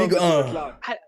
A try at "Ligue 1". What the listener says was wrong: You're eyeing too hard.